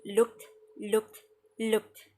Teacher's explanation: The K itself is a voiceless sound because there's no vibration in our throat when we say it. So it will be looked, looked, looked.